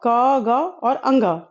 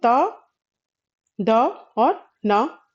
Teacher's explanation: प्रत्येक वर्ग का प्रथम, तृतीय और पंचम वर्ण जो होते हैं प्रत्येक वर्ग के वे अल्प प्राण ध्वनियां होती हैं।